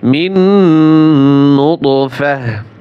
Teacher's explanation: এইখানে ওয়াকফ করলে এই যে তা আছে এই তা হা উচ্চারণ হয়